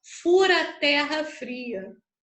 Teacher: Repara quando eu falo rápido, eu falo fura. Eu não falo furo a terra, eu falo fura.